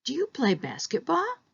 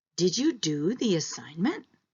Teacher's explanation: this is a yes or no question so we know it's a rising intonation pattern